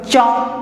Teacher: চ যখন বলবা, দেখো চ, জিহ্বা কি করছে? তালুতে আঘাত করছে। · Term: তালব্য ব্যঞ্জন